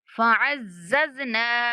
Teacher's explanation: مشدد ذا کو سختی کے ساتھ پڑھیں گے